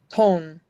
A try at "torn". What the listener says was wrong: Remember, it's long. It's or.